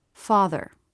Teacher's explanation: Just go from the TH sound right into the R sound without trying to make a separate schwa. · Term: syllabic consonants